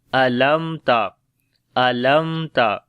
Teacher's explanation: میم ساکن کے بعد تا آ گیا تو یہاں پر اظہار شفوی ہوگا اور میم کے اوپر توسط بھی کریں گے.